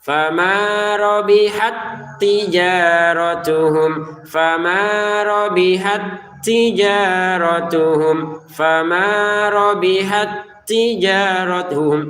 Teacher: Jadi huruf ta kalau kita berhenti disukunkan. Kalau kita gabung sukunnya hilang karena huruf ta sukunnya ini dimasukkan ke ta yang berikutnya.